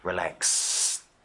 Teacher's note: We're going to make the last two sounds much stronger, so it becomes relaxed. You can almost not hear the k sound. It goes away. · Now there we have three sounds in the final position, but notice that that k sound, which is also a plosive and out sound, becomes very weak. We're not making it strong.